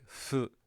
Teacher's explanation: your lips are already close, and that's why still today, instead of saying who, we say fu with this sound here, that fu sound.